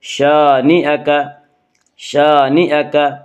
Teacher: الف مدہ کو 1 الف کے برابر کھینچ کر پڑھیں گے۔